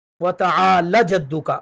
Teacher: آ کو ایک الف کے برابر لمبا کرنا ہے عین کی آواز کو